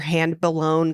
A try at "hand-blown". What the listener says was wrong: Hand-blown. You had an extra syllable to that one.